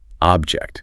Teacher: As a noun, it's a physical thing. stress on the first syllable.